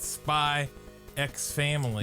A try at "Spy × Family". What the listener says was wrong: You know goddamn well it's just Spy Family. It's not pronounced Spy X Family.